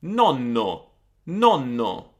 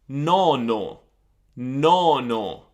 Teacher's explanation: See the O, the first O, I'm making it very short.